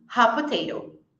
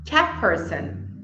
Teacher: eu vou eliminar o som do t e vou falar apenas o som do p. Ao invés de falar hot potato, eu falo hot potato.